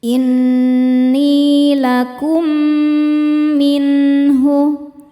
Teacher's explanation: Cara bacanya mim yang sukun masukkan ke mim kedua kemudian tahan dengungkan. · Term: idgham mimi